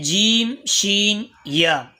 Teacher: بیچ زبان تالو کے اوپری حصے سے مل کر ادا ہوتے ہیں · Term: حروف شجریہ